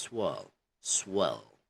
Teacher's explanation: you could hear the r but you know in British accent it's kind of minimized · The R is really minimized. Okay, you can't hear it that much.